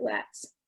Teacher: flats is not a part of finnish phonology in other words finnish doesn't allow for two consonants to come together like that at the beginning of words